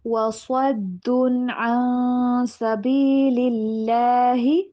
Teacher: صاد کو موٹا کر کے پڑھیں گے